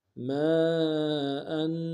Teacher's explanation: الف مدہ کے اوپر مد متصل ہے، کم سے کم 3 انداز میں کھینچیں گے